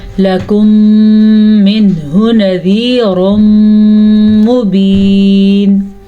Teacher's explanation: یہاں پہ ادغام شفوی کا قاعدہ ہے کیونکہ میم ساکن کے بعد میم متحرک آ گیا · یہاں پہ اظہار کا قاعدہ ہے کیونکہ نون ساکن کے بعد ہا آ گیا ہے تو اس کو ظاہر کر کے پڑھیں گے